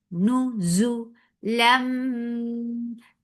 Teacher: This is iqlab. So you're changing the sound of noon into meme.